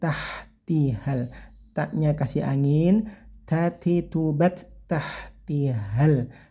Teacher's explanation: Terus dengungkan yang lama sekitar 3 harokat atau 1,5 alif. Min tahti, haknya yang bagus yaitu cukup mengalir saja aliran anginnya tanpa kasar ya.